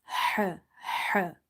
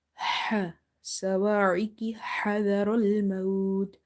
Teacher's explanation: Ha is from the middle of the throat. It's from the halkiya letters.